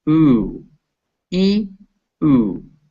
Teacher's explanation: you can feel both of those are high up in the mouth. But this one is in the front, E, and this one is in the back, ooh.